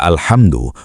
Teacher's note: Kata alhamdu menggunakan huruf H halus dari tengah tenggorokan.